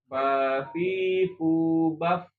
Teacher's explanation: ketika dia sukun udaranya dilepas dialirkan ya · Jadi fa itu aliran udaranya sangat deras ya. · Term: huruf fa, hams